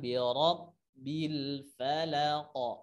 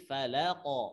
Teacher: Falaq itu kan qalqalah. Qalqalah itu pantulannya arahkan ke fathah.